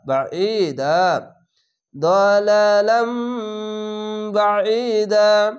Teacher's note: তো এখানে লাম দালালাম বাঈদা, এখানে আয়াত আছে থামতে হবে, তার জন্য একটি জাবার আলিফের সঙ্গে মিলিয়ে এক আলিফ টেনে থেমে যাবেন, জেরের পাশে ইয়া সাকিন এক আলিফ টেনে পড়বেন, আইনটিকে মোটা করে গলা চিপে পড়বেন